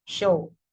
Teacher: The show is produced or show is pronounced with schwa and O.